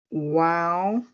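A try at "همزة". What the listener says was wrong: It's not a wow. Yeah, whenever you see a Hamza on anything, it's a Hamza. It's not a wow.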